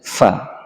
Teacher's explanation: Nah, huruf fa ini keluarnya dari perut bibir bawah, fa, dengan cara menindihkan gigi atas ke bagian merah bibir bawah, sehingga ada hembusan angin yang kencang